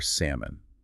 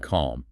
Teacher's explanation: The L is completely gone. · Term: silent L